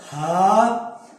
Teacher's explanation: हा जो इंतहा हलक से आती है, उससे हलक वाली नहीं, इंतहा हलक से होगी सीने के साथ।